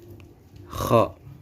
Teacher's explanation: makhrajnya ujung tenggorokan yang paling dekat dengan lidah